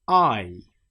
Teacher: It starts as a and ends in E. I. The whole shape of the mouth changes through this.